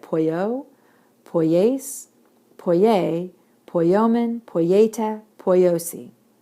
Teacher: And so what happens in the contracted forms is that the accent is going to hit on the ending. And so they're going to sound a little different from non-contract verbs subjunctive active.